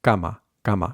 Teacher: To pronounce this correctly, all we need to do is just imagine an S there, and we can say it like that, scama, scama, and then we can remove that S, cama, cama, and that'll help us find the k sound that we need without aspirating, without going k, k.